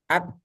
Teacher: Untuk kaf sama ta, suaranya itu tertahan. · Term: syiddah